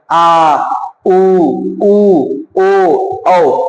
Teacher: पश्च स्वर जीभ के पिछले हिस्से से जब बोला जाए, आ, ऊ, ओ, औ, ये पश्च स्वर हो जाएंगे।